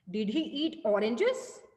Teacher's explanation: So oranges पे आप stress दे रहे हो कि आप जब whenever you are asking question, so you are giving a stress on oranges here